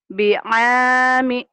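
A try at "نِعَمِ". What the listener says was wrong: Mana bi? Titiknya di atas.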